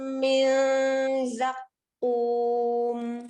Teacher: Zakum monyongkan ketika dia domahnya kum. Kemudian pada saat mim sukun ya normalkan ya bertemunya 2 bibir ya.